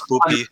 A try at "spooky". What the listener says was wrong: It's a K, not a P.